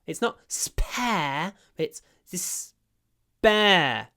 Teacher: And interestingly, the pair actually sounds more like bear, because after a s, we don't aspirate the p.